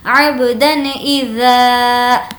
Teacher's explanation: یہاں پر بھی تنوین کی آواز کو ظاہر کریں گے کیونکہ تنوین کے بعد حرف حلقی میں سے حمزہ ہے